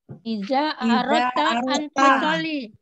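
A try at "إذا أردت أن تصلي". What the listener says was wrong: Ya, baik.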